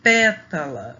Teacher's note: e na pétala a sílaba que a gente fala com mais a gente pronuncia ela mais forte é a pé né a sílaba pé e ela é a antepenúltima